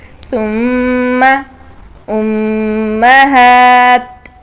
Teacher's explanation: मीम दोनों होठों के खुश्क हिस्से से अदा होता है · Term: बररी